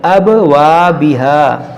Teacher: ابا میں قلقلہ کریں گے